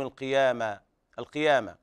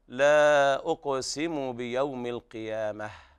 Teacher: وهنا تاء التأنيث يوقف عليها بالهاء لأنها تاء مربوطة، ففي حال الوصل تقرأ تاء وحال الوقف تقلب هاء، فيكون النطق هكذا لا أقسم بيوم القيامة، والهاء ضعيفة ولا داعي للمبالغة فيها.